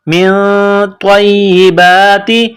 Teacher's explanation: لو کولو من طیباتی میم کو نون کے ساتھ ملانا ہے نون ساکن کے بعد طا ہے حروف اخفا ہے تو یہاں غنہ کرنا ہے طا کو موٹا کرنا ہے طا کو یا کے ساتھ ملائیں